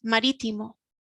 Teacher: you can hear that the strength is in the middle of the word you can hear the strength again at the end which is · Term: the accent